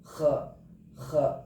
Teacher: huruf ini keluar dari bagian ujung tenggorokan, dekat dengan pangkal lidah dan langit-langit belakang. Suaranya agak bergema atau kayak orang ngorok gitu. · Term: adnal halq